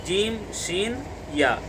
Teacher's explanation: ज़ुबान का बीच और उसके मुकाबिल यानी उसी के मुकाबिल में सामने बिल्कुल ऊपर का तालु आपस में मिल जाएंगे तो जीम, शीन यानी बड़ी शीन और या, ये तीनों हरूफ निकलेंगे।